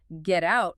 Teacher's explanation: The t becomes a flap sound